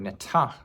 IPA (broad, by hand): nɪtʰaʔ